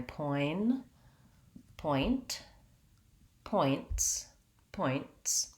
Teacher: ts sound is very fast together · think about saying a t sound and just holding it so i can't hold a t sound it's a stop sound the air releases and it's one sound